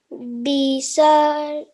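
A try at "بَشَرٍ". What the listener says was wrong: Okay, stretch that sound out of the nasal sound at the end.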